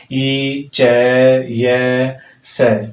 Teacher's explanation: ईचु यसानाम तालु अर्थात इसमें जो अक्षर आ रहे हैं, ई चू का मतलब हो गया च वर्ग, य और ये स, इन सभी का देखिए ई, च वर्ग, य और स, इन सब का उच्चारण तालु के भाग से किया जाता है। जब भी बोलते हैं ई तो हमारी जो जिह्वा है उस जिह्वा के नीचे से ये ध्वनि निकल जाती है।